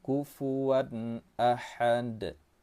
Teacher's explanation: Tanwin bertemu dengan alif itu termasuk dalam hukum tajwid izhar halqi. Cara bacanya jelas tanpa disertai dengan dengung